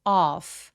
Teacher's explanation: off 아니고 off. off 하면서 턱도 엄청 길어지는데 턱이 길어지면 소리 자체도 굉장히 길어져요. 그래서 off 해주셔야 돼요.